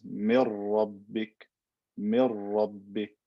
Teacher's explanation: The word min rabbika, the word min rabbika becomes mir rabbik, right? I don't say mir rabbik with an N sound, it's completely gone.